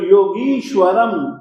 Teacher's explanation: इसी तरीके से योगीश्वरम, योगी और ईश्वर दोनों की ई, योगी में ग में जो ई है और ईश्वर की जो ई है, दोनों ई जुड़ गए